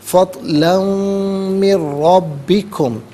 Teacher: میم کے ساتھ ملا کر میم کی آواز کو غنّے کے ساتھ ادا کریں گے، اور من میں نون ساکن کو را کے ساتھ ملا کر را کی آواز ادا کی جائے گی۔ · را پر زبر ہے، را کو پر کر کے پڑھیں گے، مشدد ہے، جماؤ کے ساتھ پڑھیں گے